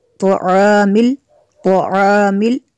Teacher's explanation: तोआमिल तो को भी पुर करना है।